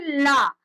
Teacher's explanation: अपनी जिह्वा को हम पलटकर ऊपर लगा लेते हैं, ऊपर को मोड़ते हैं, वायु मार्ग को रोकते हैं। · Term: पार्श्विक